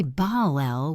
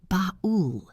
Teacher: We say bul. It sounds like a mixture of an o and an l. It resonates in the back of the throat. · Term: dark L